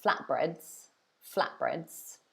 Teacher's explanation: if you're saying it kind of naturally in English, you might drop the T because it's easier. So you might say flatbreads, flatbreads, like that.